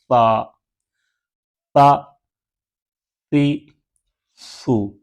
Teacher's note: जुबान का सिरा ऊपर के दांतों के अंदरूनी किनारे से लगेगा जुबान का सिरा ऊपर के दांतों के अंदर किनारे से लगाएंगे